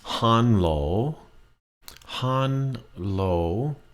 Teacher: they never end a Thai word with an l sound so what they will do is they will change it to an n